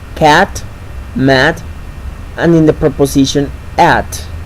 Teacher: And finally, the last front vowel sound is the sound A, which is the lowest front vowel sound. We can find it in the following words: cat, mat, and in the preposition at.